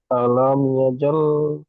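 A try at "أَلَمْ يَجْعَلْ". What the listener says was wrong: ইয়াজআল, ইয়াজাল নয়, ইয়াজআল, আইন লাম যাওয়া আল।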